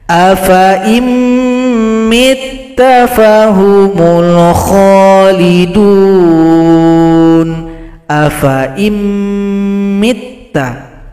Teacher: Berikutnya di sini ada bulat lingkaran, maka sifir mustadir, menghilangkan tanda panjang. Fa dibaca pendek, langsung gabung kepada huruf hamzah yang kasrah.